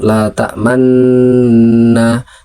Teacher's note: Membacanya seperti menampakkan bunyi vokal u dengan isyarat bibir saja. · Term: ismam